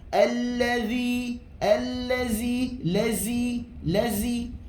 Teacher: Huruf zal tidak ada hamas, tidak ada angin. Jadi huruf zal bukanlah huruf hamas.